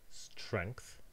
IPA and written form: stɹɛŋkθ (strength)